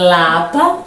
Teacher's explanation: Olha o l saindo pela lateral